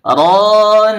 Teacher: RO di sini dibaca tebal karena huruf ro berbaris fathah